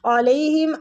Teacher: عین وسط الحلق سے یعنی حلق کے درمیان والے حصے سے ، علیہم عین ہمیشہ وسط الحلق سے ہی ادا ہوتا ہے،